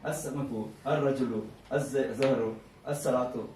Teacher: the lam is written, but they drop it because you cannot read that lam, two things continuously you cannot read that. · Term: Shamsi